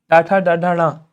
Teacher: यह आपके ट वर्ग वाले हैं। ट वर्ग मूर्धन्य व्यंजन है।